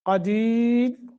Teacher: را ساکن ما قبل یا آ جائے تو اس را کو باریک پڑھتے ہیں، تو اب را کو ہم نے ساکر کر دیا۔ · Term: را باریک